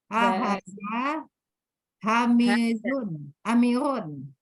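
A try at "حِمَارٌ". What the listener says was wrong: Bukan hamir. Himarun. Himar.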